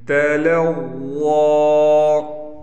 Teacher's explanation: ضا پر کڑا زبر بھی ہے اور ضا موٹی بھی پڑھی جائے گی